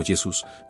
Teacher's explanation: en latín medieval y renacentista la inicial podía pronunciarse como nuestra actual y consonántica. Por lo tanto, Yesus sonaría algo así como Yesus manteniéndose no tan lejos de la pronunciación original Yeshua.